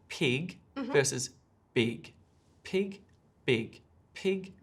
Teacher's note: that's the key difference between the two sounds we're turning on our voice